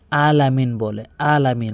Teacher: আইনের জায়গাতে হামজা এর উচ্চারণ করে ফেলে।